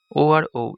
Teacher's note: এগুলো উচ্চারণে কণ্ঠ ও ঠোঁট উভয় স্পর্শ করে, তাই একে কণ্ঠস্থ বর্ণ বলা হয়।